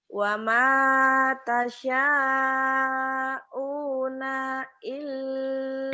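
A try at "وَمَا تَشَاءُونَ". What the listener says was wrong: Pendek. Wa ma tasya'u-nya panjang.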